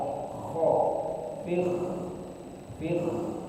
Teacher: penyebutan kho itu ada di pangkal tenggorokan